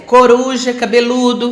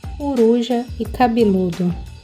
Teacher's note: Harmonização vocálica nada mais é o que as vogais I e U são mais fechadas na nossa língua. Elas estão presentes na sílaba tônica e elas puxam para cima as vogais pretônicas. E e O fechando essas vogais para formar um grupo harmônico, para criar um único som.